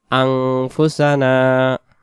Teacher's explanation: এজন্য জলাম না আনফুসানা, রব্বানা জলামনা আনফুসানা, আনফুসানা এটাকে আং বলতে হবে। নুন সাকিনের বাম পাশে ফা অক্ষর ইকফার, এজন্য আন না হয়ে আং উচ্চারণ হবে